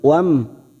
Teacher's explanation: mim sukun bertemu ra, idhar safawi dibaca jelas.